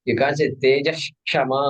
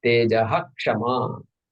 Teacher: When the Visarga is followed by this one specific conjunct consonant called Ksha, the Visarga has to be pronounced exactly as it is.